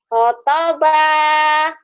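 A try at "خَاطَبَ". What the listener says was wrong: Khonya panjang.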